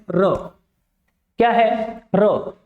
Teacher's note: जिस व्यंजन के उच्चारण के समय कंपन फील हो उसको अपन क्या कहते हैं? प्रकंपित व्यंजन या लुंठित व्यंजन कहते हैं।